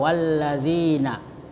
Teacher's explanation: Alif lam bertemu dengan huruf zal. Ya, cara membacanya dengan mengidghamkan atau mentasdidkan pada huruf lam dan huruf nun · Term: idgham syamsiyah